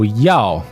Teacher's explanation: that's a fourth tone it means to want to want to do something